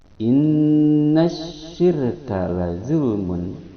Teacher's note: Inna mengandung hukum bacaan gunnah yang sebabnya adalah nun bertasydid. Dibacanya berdengung 2 harakat pada hidung. · Innash alif lam samsiyah, yang mana alif lamnya tidak dibaca, dimasukkan ke dalam shin, sya yang makhrajnya di tengah lisan. Innasyirka ini wajib idgham, alif lam samsiyah.